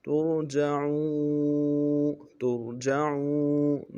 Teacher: کو موٹا کریں گے، جیم کو نرم سے ادا کرنا ہے، عین کو واو کے ساتھ ملانا ہے، واو مدہ ہے ایک مقدار میں کھینچیں گے